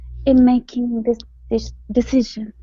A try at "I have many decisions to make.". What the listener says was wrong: The only thing here is decisions up here. You left off the S. Okay, so I have many decisions to make.